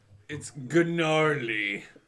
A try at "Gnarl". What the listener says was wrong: No, there's no Y. It's not Gnarl, it's just Gnarl.